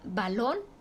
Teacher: su sílaba tónica está en lon, la última sílaba, y termina en N.